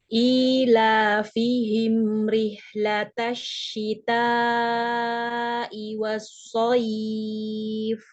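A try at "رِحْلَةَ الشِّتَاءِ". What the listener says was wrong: Hanya dipanjangkan ya, alirannya panjang sama seperti shin ya. Rihlatasyita. Hanya alirkan lagi, sedikit lagi alirannya ya. Rihlata tadi masih pendek, rihlatasyita gitu ya. Nah, dipanjangkan lagi sedikit alirannya. Rihlatasyita. Jadi sama. Panjangnya dengan shin itu tadi sama. dialirkan. Dipanjangkan lagi sedikit aliran suaranya. Rihlatasyita. Jadi sama.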